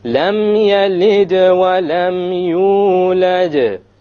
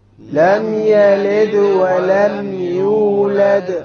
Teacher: both of the qalqas are on the dal.